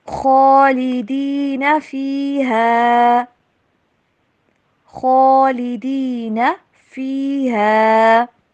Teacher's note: خواہ کو موٹا کر کے پڑھیں گے، نون کو لمبا نہیں کرنا